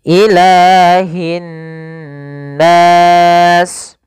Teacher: ada mad tabi'i pada lafal lam, yaitu panjangnya huruf lam ditandai dengan fathah bertemu alif 2 harokat